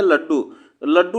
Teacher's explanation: द्वित्व हो रहा है, मतलब 2 बार यह उच्चारण हो रहा है